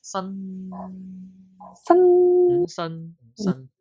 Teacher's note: 山 But for this one, if you want to make this sound very long, you don't make the A long because then it will sound like the mountain. Okay, so you make the N sound long, so like this sun, 山 sun, sun.